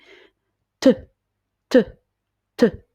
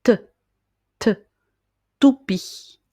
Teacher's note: Pour prononcer le son T, il faut commencer par placer le bout de votre langue juste derrière les dents, presque au niveau du palais.